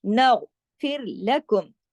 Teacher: نغ غین جماؤ کے ساتھ لیکن غین موٹا پڑھا جائے گا ، نغفر لکم، پھر باقی تمام باریک حروف ہیں، خا تو